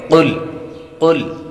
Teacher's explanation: قاف حروف مستعلیہ میں سے ہے اور لام بریک، تو قاف کو پر پڑھیں گے